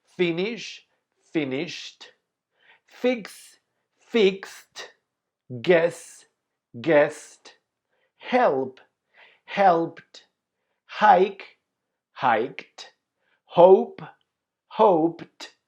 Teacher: these verbs finish in voiceless sounds, so you pronounce the final ed as t.